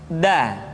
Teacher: diucapkan dengan menyentuhkan ujung lidah kita dengan bagian gusi gusi dua ujung dua gigi seri bagian atas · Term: huruf da